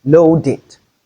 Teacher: In loaded, we have the ed coming after the d sound, which is the voiced alveolar plosive sound.